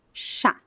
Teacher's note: If you place your hand here and you pronounce the word chá, there is no vibration of the vocal cords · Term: unvoiced